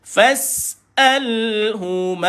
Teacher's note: Sin sukun dijelaskan bunyi sin. Matikan sin, ada sifat safir, mendesir.